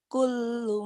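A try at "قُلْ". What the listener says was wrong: Kul, kul, jangan kulu. Lamnya mati. Kul.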